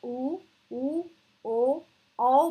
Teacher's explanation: ऊ, ओ, औ बोलते वक्त होठ जो है वो गोल हो जाते हैं।